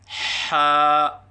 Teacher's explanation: الف کی ادائیگی منہ کے کھولنے سے ہوتی ہے، اور ایک الف کے برابر لمبا کر کے پڑھیں، جیسے حا، نہ ایک الف سے کم ہو جیسے حا، اور نہ ایک الف سے زیادہ ہو جیسے حا۔